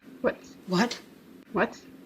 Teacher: it's much more common these days to just do a clean W sound.